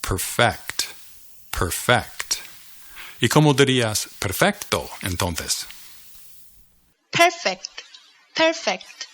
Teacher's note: notice that the emphasis is on the second syllable perfect o perfect perfect right El emphasis perfect pronunciation you emphasize